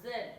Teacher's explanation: The Z sound is a voiced sound because when you make this sound, your vocal cord vibrate.